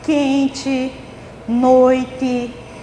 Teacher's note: essas palavras se escreve como é no final mas a gente pronuncia com ih